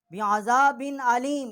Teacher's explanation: یہاں ہم نے غنہ نہیں کیا کیونکہ آگے جو ہے حروف حلقی ہے